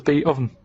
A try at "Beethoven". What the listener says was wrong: No, you said beat.